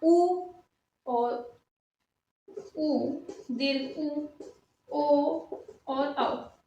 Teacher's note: उ और उ, दीर्घ उ, ओ और औ, ये हमारे क्या कहलाते हैं, वृत्तमुखी स्वर कहलाते हैं